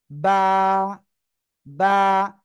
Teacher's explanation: দুই ঠোঁট, দুই ঠোঁটের ভিজা অংশ থেকে। দেখেন দুই ঠোঁট আপনার যখন বন্ধ রয়েছে মুখটা, দুই ঠোঁটের কিন্তু ভিজা অংশের দিকে লেগে রয়েছে, সামনে তো লেগে রয়েছে আবার ভিজা অংশের দিকেও। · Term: বা অক্ষরটা